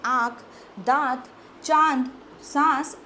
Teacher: तो चंद्रबिंदु को हम अनुनासिक कहते हैं। इस ध्वनि का उच्चारण मुख व नाक दोनों से होता है